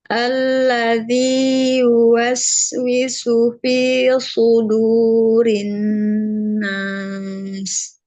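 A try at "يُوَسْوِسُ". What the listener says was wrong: Sin yang dhammah berubah. Ulang. Jangan berubah.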